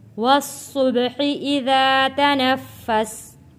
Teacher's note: با حروف قلقلہ ہے، آواز واپس پلٹ کر آئے گی۔ صاد موٹا پڑے جانے والا لفظ۔